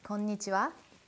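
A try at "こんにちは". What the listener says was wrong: No, you put too much emphasis on nichiwa though. It's konnichiwa.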